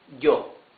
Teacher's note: some Spanish-speaking countries pronounce the Y as sh. Some others, mostly, pronounce it like y.